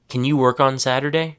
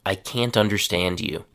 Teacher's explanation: Another word that has a surprising realworld pronunciation is the modal verb can. In reality, people pronounce it as kin or kin. Three examples.